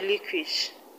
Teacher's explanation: Relinquish, the stress is on LIN, lin.